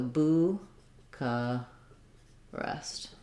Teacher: the ch we say is a k and then the schwa we say is an ah · we tend to say first syllable stress with the uu vowel the ch we say is a k and then the schwa